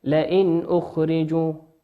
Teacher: نون ساكنة في كلمة لئن أتى بعدها حرف الهمزة، والهمزة من حروف الإظهار نظهرها كما هي